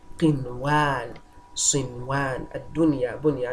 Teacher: Okay, it will be having izhar mutlaq and absolutely clear. We'll be pronouncing the nun sakina out clearly and absolutely.